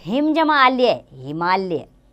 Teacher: हिम के अ तथा आल्य के आ के पास पास होने के कारण उनका उच्चारण मिलकर आ हो गया है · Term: संधि